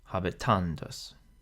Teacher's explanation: the penult is long or heavy because the A is followed by 2 consonants, so that means that the accent falls on the penult